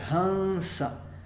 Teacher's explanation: Não é um M porque a gente não vai fechar os lábios, não vai ser hamsa, vai ser hansa. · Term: Anusvara